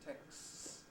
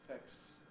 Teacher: we get a rather long s at the end